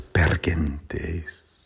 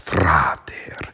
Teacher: the R is trilled in per gentes because the R is before a consonant, and also in fRater because it's after a consonant